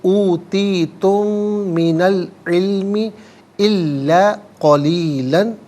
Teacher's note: نون پر زبر ہے، اس سے العلمی کی لام ساکن کے ساتھ ملائیں گے، درمیان میں سے الف یعنی حمزہ کو حذف کریں گے، ہم اسے پڑھیں گے اوتیتم من العلم الا قلیلا، یہاں وقف کریں گے تو الا قلیلا پڑھیں گے۔